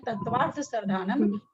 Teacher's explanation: तत्वार्थ एक तो उसके पहले संयुक्त अक्षर, फिर उसके बाद संयुक्त अक्षर, तो थ पर जोर आना चाहिए